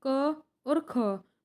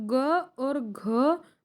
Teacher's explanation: क और ख में आवाज़ कम भारी हुई तो वो होंगे अघोष वर्ण, और ग और घ में हमारी आवाज़ ज़्यादा भारी हुई तो होंगे सघोष वर्ण